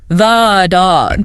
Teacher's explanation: But if the next word starts with a consonant, like dog. We say thu.